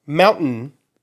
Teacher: what I'm doing is a glottal stop